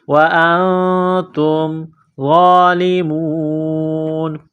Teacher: وَأَنْتُمْ، حمزہ کو نون کے ساتھ ملانا ہے، نون ساکن کے بعد تا ہے، حروف اخفا ہے، غنہ کریں گے، آواز ناک میں چھپائیں گے